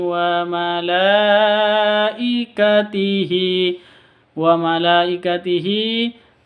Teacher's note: ada Mad bertemu dengan Hamzah di satu kata mad wajib panjangnya harus lima ketuk